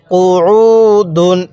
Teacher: আইনটা পড়ার সময় গলার মধ্যে হালকা চাপ দিয়ে পড়লে আইনটা সহি শুদ্ধা উচ্চারণ হবে